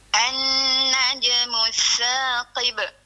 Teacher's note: Huruf sa tu jangan bagi terdengar angin. Dia huruf hamas tapi angin dia tak terdengar.